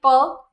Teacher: जब प बोलेंगे तो आपके दोनों लिप्स एक बार ज्वाइंट होके हवा को बंद करेंगे, फिर हवा बाहर जाएगी।